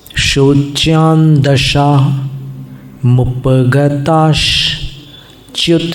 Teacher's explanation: ये श का उच्चारण साथ में करना क्योंकि विसर्ग की संधि है वहाँ पर।